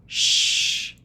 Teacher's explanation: Make sure your voice is off. Sh. This is a quiet sound.